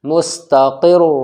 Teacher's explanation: تشدید والی را کو را مشددہ کہتے ہیں تو را کے اوپر دو پیش ہیں، یہ بھی موٹی پڑھی جائے گی